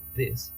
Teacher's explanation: It could be voice dental fricative, as in this at the beginning